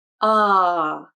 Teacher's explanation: That’s the American placement - a low, open, relaxed sound, which means the entire vocal system is also low and relaxed - the mouth and throat are open. So you want to relax the muscles inside the mouth and throat so those open cavities can become larger, and allow the voice box, this area here that houses the vocal cords, to relax and be low.